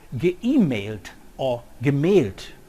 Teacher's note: the vowel is no longer a diphthong but a mid-high front vowel